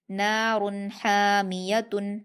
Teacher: نون پر الف مدہ ہے 2 حرکات کھینچ کر پڑھیں گے، را پر تنوین ہے اور تنوین کے بعد حروف حلقی میں سے ہا آیا ہے، اس لیے ہم تنوین کی آواز کو ظاہر کر کے بنا غنہ کے جلدی پڑھیں گے۔ نار حامیۃ، ہا پر الف مدہ ہے 2 حرکات کھینچ کر حلق سے ادا کریں گے